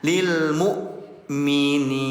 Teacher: Jadi jangan dibaca panjang lil mukminin, jangan. Kalau hamzah sukun berarti di rem ya, ada jeda